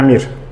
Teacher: tələffüzdə onsuz da bu m ilə rın arasına bir dənə sait gəlir